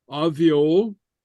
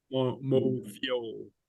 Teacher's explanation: So the BH sounds like a V, okay? And again, that's because that's lenited